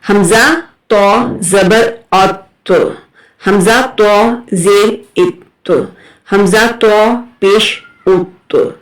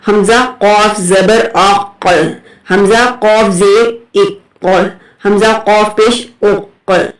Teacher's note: تو جو ہے وہ حروف کلکلہ میں سے ہے. یہ دوسرے ساکن حروف کی طرح نہیں پڑھا جائے گا. اس میں تھوڑا سا جھٹکا دیں گے.